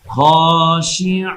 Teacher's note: আইনকে আমরা গলার মাঝখানে নিয়ে বলবো